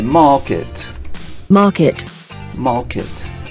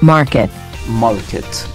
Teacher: different items okay and market we say market market market because in british english after a vowel a e i o u these are vowels after a vowel we don't pronounce the r